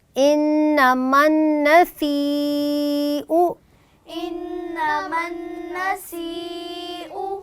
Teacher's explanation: النسیء انما النسیء یہاں سواد نہیں بیٹی، اس کو سین ہے، سین میں سٹی کی ساؤنڈ پیدا کی جائے گی، اس کو سین پڑھنا ہے آپ نے۔